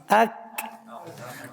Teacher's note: زبان کی جڑ نرم اور سخت تالوں کی جگہ سے مل کر کیف ادا ہوتا ہے